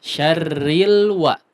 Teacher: huruf lam jangan terlalu berat ya diucapkannya. Syarril, ril, seperti ada tasdidnya tapi mungkin ya sangat bersemangat ya mengucapkannya, tapi nggak masalah ya.